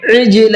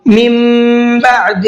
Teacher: عین کو حلق سے نکالیں گے